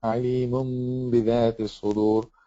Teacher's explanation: So here the tanween on the meme, instead of saying alimun, you have to say alimun bidhati as-sudur. And you close the lips, but you do pronounce the gunna